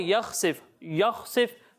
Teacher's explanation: خا کو پر پڑھنا ہے، یا کو پر نہیں پڑھنا